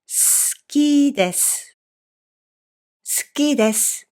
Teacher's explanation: The vowel u in this phrase is silent, so please pronounce it 好きです.